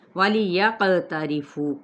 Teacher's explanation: قاف پہ قلقلہ، را باریک، فو پہ واو مدہ اور ما پہ الف مدہ